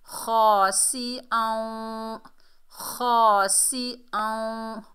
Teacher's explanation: इदगाम माल गुन्ना होगा, यानी गुन्ने से पढ़ेंगे